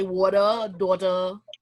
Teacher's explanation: in american english for example when a t is in the middle of the word is usually not pronounced as a t is usually pronounced as a d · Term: a d sound